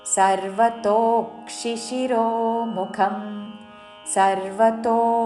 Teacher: సర్వతో తో దీర్ఘము దాని మీద ఆఘాత